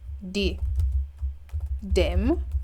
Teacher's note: th sound basically is realized or it's shown as or heard as the dental D sound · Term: th stopping